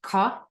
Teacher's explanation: This Q that you will see quite a bit is kind of just like an emphatic or guttural K. So just more of a ka sound as opposed to just like a k.